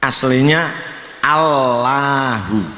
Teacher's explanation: Allahu ujung lidah nempel pada gusi